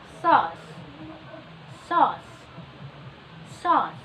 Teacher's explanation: the vowel is made by slightly raising the back of your tongue, and then your lips is closely rounded.